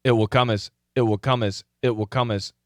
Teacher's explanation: there's a stop sound, but it's a complete glottal stop sound all the way back here.